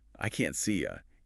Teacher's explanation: This was just a simple gliding reduction. The E sound of C reduces slightly as the tongue prepares for the Y sound of U.